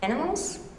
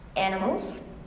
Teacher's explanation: the rise either starts on the first syllable or on the last syllable of the word animals